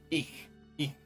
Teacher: That ich is that hiss at the end of the ich. That's a sound Japanese and English, neither of them really have it.